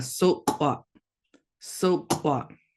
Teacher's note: you've got a glottal stop at the end, so that kind of abruptly stops the whole word.